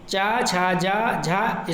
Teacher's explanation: च छ ज झ स्पर्श संघर्षी व्यंजन है